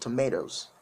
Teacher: they use uh the alveolar tap at the end of it · So I don't know whether you know what the alveolar tap means, but the alveolar tap sounds more like a D, but a short D